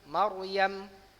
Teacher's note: Ro-nya tafkhim ya. Jumpa huruf mim yang sebelumnya ini fathah ya.